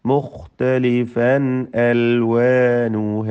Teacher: മുഖ്തലിഫൻ അൽവാനുഹ തൻവീൻ ഇൽഹാർ ഹൽഖി, ശേഷം ഹംസ വന്നു. അൽവാനുഹ അലിഫിൽ 2 ഹറക്കത്തിൻ്റെ അളവിൽ മാത്രമേ ദീർഘം നൽകാവൂ, കൂടുതൽ ദീർഘിപ്പിക്കരുത്.